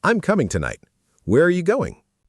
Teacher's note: Falling intonation at the end of a statement or a what question